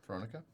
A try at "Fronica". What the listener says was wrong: Yeah, with an F at the beginning. Fron. Fronica. Fronica.